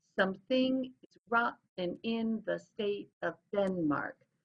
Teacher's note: it's an unstressed, stressed, unstressed, stressed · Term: iambic pentameter